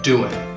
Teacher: Almost always the G in doing will get dropped, doing, and then it'll sound like, how are you doing?